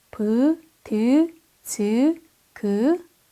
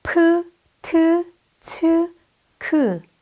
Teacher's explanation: 피읍, 티읕, 치읒, 키읔은 브, 드, 그, 즈 발음에 흐 소리를 더한 발음을 나타내는 문자로 더 공기도 많이 나오고 마찰도 큰 발음 표기입니다